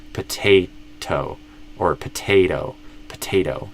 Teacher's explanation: I have the option to do a flap T, and I will usually do a flap T there.